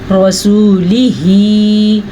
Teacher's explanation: را کو پر پڑھنا ہے اور ہا کے تلفظ کا خاص خیال رکھنا ہے